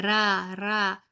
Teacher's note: را کے اندر تھوڑا سا وہ ایک تکرار ہوتی ہے ر کی تھوڑی سی